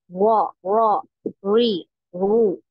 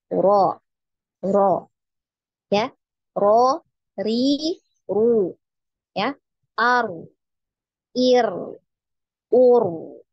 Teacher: Jadi tetap ada getarannya, namun hanya sekali ya. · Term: takrir